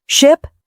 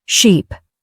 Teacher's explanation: Say, ship, then sheep. Ask, are my lips relaxed and unrounded for I in ship, then stretched wide for I in sheep